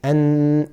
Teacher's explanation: you have the tip of the tongue is touching the gums and when you say n there's a nasal sound so there's a sound that comes from the nasal area with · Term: makhraj of noon